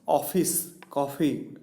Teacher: ઓફિસ, કોફી પહોળું ઉચ્ચારણ થાય